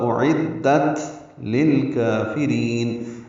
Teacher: حمزہ اقصی حلق سے ادا کریں گے، عین وسط حلق سے ادا کریں گے، دال سے ملائیں گے، دال کو تا سے ملائیں گے، تا ساکن ہے، اس پہ حمز ہوگا اعدت للکافرین۔ · لام ساکن پہ اظہار قمری ہے، کاف باریک پڑھیں گے، دو حلقات لمبا کریں گے، را باریک پڑھیں گے، لمبا کریں گے، نون ساکن پہ اظہار ہوگا